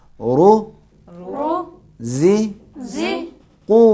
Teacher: پیش کے بعد واو ہے اس لیے اس کو کھینچنا ضروری ہے.